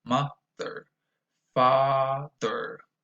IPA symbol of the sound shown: ɚ